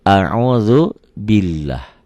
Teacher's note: lafaz Allah dibaca tipis bunyi A